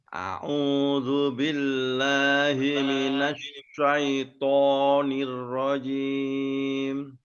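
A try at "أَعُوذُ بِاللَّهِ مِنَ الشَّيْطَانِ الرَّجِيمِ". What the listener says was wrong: Sekarang agak sedikit lagi di kata billahi. Billahi. Nah, itu juga hati-hati sekali ya. Karena rentan di situ agak sedikit miring. Billahi kayak he. Nah, itu perlu ditekan, mungkin ditekan sedikit supaya bunyi hi-nya bisa terdengar dengan jelas.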